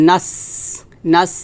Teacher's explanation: নাস এটা হামস হবে, নাস, এভাবে বাতাস বের হবে